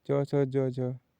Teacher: हिंदी की तालव्य ध्वनियाँ है